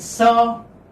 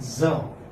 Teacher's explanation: Sa is voiceless, and za is voiced.